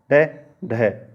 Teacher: उत्क्षिप्त व्यंजन कहलाते हैं क्योंकि इनका उच्चारण एक ही झटके के साथ में किया जाता है